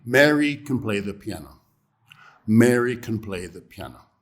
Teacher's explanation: That is the natural form twice. When we use can in affirmative, we do not stress it. It's a weak form.